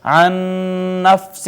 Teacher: دو نون اکٹھے آگے، پہلا ساکن تھا دوسرا متحرک، پہلے کو دوسرے میں ضم کر دیا، ادغام کر دیا ، یہ ادغام متماثلین ہو گیا، اس کے بعد نون تنوین